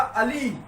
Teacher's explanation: ला के ऊपर जो मात्रा थी, कहीं ना कहीं ह्रस्व से दुगुना समय उसको बोलने में लगा। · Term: दीर्घ स्वर